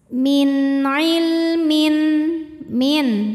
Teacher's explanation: Lam sukunnya dibunyikan dengan jelas. Ini namanya lam mutlak. Lam sukun ini tidak menghadapi lam, tidak juga menghadapi ra ya.